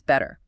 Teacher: >> So they don't block the air and release it sharply. >> No, instead the tongue just briefly bounces against the roof of the mouth creating a very soft D sound